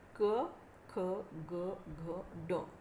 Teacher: जिभेचा मागचा भाग मृदू टाळूच्या दिशेने उचलून या व्यंजनांचा उच्चार होतो.